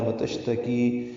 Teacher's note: شین ساکن پہ ہمس ہے، تفشی ہے، منہ میں آواز پھیلتی ہے، سانس جاری رہتی ہے